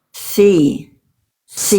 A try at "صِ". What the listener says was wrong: nah ini si Bunda masih kurang tebal. Alhasil kesalahan Bunda sodnya tertukar menjadi huruf. Nah, jadi huruf sin. Mana huruf sod nih? Sod ketika berharokat itu memang kesalahan yang sering kali terjadi adalah menjadi huruf sin. Kesalahan yang sering kali terjadi ketika kita melafalkan sod harokat adalah tertukar dengan huruf sin. Karena memang sin dan sod itu bedanya cuma satu.